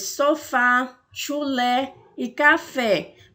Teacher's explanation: o primeiro um acento agudo que ele indica que a vocal a vogal tônica ela possui um timbre aberto